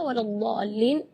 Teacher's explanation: Mad di situ kita harus panjang membacanya 6 harakat, karena di situ hukumnya mad lazim kalimi mutsaqqal.